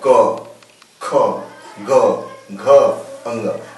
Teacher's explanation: ये कंठव्य है क्योंकि जो आवाज है वो हमारे कंठ से निकलती है, गले से कंठ से निकलती है।